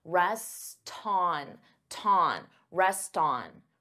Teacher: you can't rest on so here you hear that t because I'm linking the two words together and I'm transferring the T sound onto the vowel